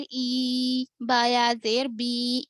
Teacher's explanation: یا پر جزم اس سے پہلے زیر تو یا مدہ، اس کو تھوڑا کھینچ کر پڑھنا